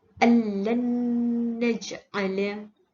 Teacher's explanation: Ianya perlu didengungkan pada huruf nun kerana nun mati bertemu dengan huruf nun, maka ia akan menjadi kepada hukum idgham ma'al gunnah.